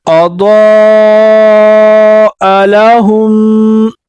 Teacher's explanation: یہاں اضاء لہم میں دعا کو پر پڑھیں گے، حمزہ کے اوپر مد آیا ہے تو وہ 3 الف کی مقداری سے اوپر کھینچیں گے